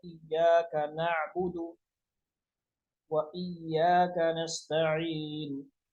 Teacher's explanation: ایاک پہ کوشش کریں ایاک نرم نہ پڑیں شد کے ساتھ